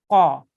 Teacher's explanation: Now, this is a thick sound. This is a thick qaf. So you have to make your mouth into a round shape when you say this sound. Qa. Okay.